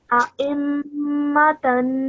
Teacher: the 2-second nasal sound on the meme, and then the 2-second nasal sound on the tanween